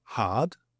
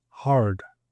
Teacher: the Brits tend to drop the emphasis or the pronunciation of the letter R unless it's followed by a vowel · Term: non-rhotic